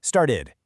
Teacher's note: When a T is sitting between 2 vowel sounds, it gets lazy. It softens into this really fast D sound. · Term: flap T